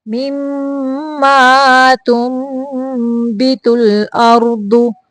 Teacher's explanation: یہاں پہ اخفا ہے نون کو میم کی آواز میں بدلنا ہے